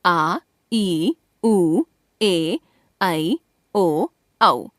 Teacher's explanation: जिन स्वरों के उच्चारण में ह्रस्व स्वरों से दुगना समय लगता है अथवा दो मात्राओं का समय लगता है वे दीर्घ स्वर कहलाते हैं।